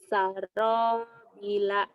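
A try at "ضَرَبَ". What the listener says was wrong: B-nya panjang. Nah, yang panjang ro sama ba-nya. Ba-nya tadi kamu pendek.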